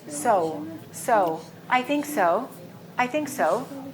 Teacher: round your lips so it's not saw put a little u sound at the end